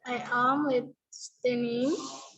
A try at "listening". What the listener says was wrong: T-nya nggak dibaca. I am listening.